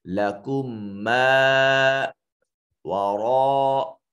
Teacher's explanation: میم ساکن کے بعد میم متحرک تھا تو میم ساکن کا میم متحرک میں ادغام کر دیا، اس کو ادغام شفوی کہتے ہیں۔